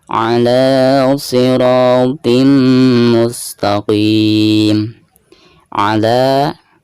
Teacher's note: bacaan la-nya dipanjangkan 2 harokat karena dihukumi mad tabi'i ya